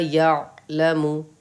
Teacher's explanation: عین پہ جزم ہے لیکن آپ کو قلقلہ نہیں کرنا ہے کیونکہ عین حروف قلقلہ میں سے نہیں آ رہا ہے